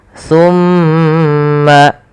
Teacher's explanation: sa si su maka tumma kemudian pada lafal mma atau tsumma itu ada bacaan namanya ghunah yaitu suara mimnya ditahan sepanjang dua harakat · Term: gunnah